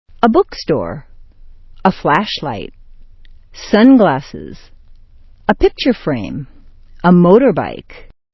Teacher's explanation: with a compound noun you have two nouns together noun noun and the first one is sharply stressed